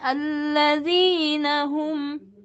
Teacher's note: Allazina ayatnya awalnya ditinggikan